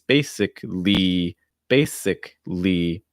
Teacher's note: that y at the end is a long i sound and you want to make sure you're holding it long enough